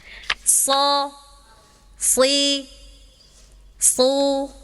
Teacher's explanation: So juga sama nih, sin sama so sama makrotnya. Ya, sama-sama di ujung lidah nempel ke gigi seri yang bawah. Tapi so isti'la naik, ya.